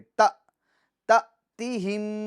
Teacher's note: وہ الف جس پر سکون ہو ہم اس کو جھٹکا دے کر پڑھیں گے